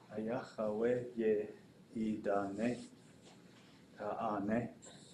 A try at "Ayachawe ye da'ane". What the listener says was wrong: Got too many A's in there. Ayachawe ye da'ane.